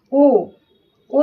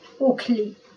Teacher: ओ यानी गोल होठ से बोल रहे हैं। ओ थोड़ा सा समय लग रहा है, थोड़ा सा बल लग रहा है, लेकिन लग रहा है इसमें भी।